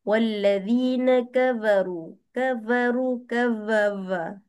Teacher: disebabkan gigi dengan bibir maka dia jadi seolah-olah huruf V.